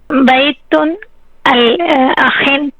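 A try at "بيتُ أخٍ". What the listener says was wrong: بیتو اخن، بیتو، کیونکہ یہاں پہ پہ ہم تنوین نہیں بولیں گے. ٹھیک ہے، پہلے لفظ پہ ختم کر دینی ہے. اگر الف لام بولنا ہے تو تنوین نہیں بولنی، اگر تنوین بولنی ہے تو الف لام نہیں بولنا.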